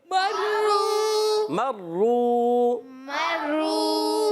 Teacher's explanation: را پر تشدید ہے، را کو ذرا رک کر ادا کریں گے، مگر آگے واو مدہ بن رہا ہے، واو ساکن ہے، واو ساکن سے پہلے پیش آ رہا ہے. ایک الف کھینچنا بھی ہے اور را کو پر بھی پڑھنا ہے